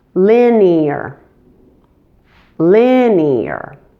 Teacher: But make sure to pronounce it as 3 syllables with stress on the first syllable · The E and the A are not combined as one, but are split into 2 separate syllables. And in order to do this, so both vowel sounds are clearly distinguishable, a little Y sound is inserted between the 2 vowel sounds.